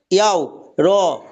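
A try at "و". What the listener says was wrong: ইয়াও নাকি ওয়াও? ইয়া বলবেন ওয়াওকে, আর ইয়া বলবেন।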